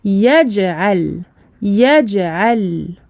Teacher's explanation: Si je dis yaj'al, je vais donner la rakhawah à la lettre jim, alors que pour le jim, il n'y a pas cet écoulement du son. Le jim est une lettre shadida, une lettre pour laquelle il y a un blocage du son. C'est la raison pour laquelle on bloque le son et on fait rebondir la lettre quand elle porte un soukoun. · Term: qalqalah